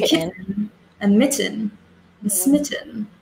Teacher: Normally, if it's a double T in the middle, I'll eat the T.